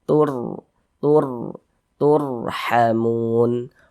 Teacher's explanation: huruf sukūn ra dibaca tafkhim, dibaca tebal-tebal. Jadi, pangkal lidah kita terangkat ke atas saat kita mengucapkannya. Pertebal bunyi 'r'.